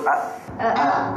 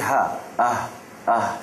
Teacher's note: Pangkal halqum, iaitu hamzah dan ha.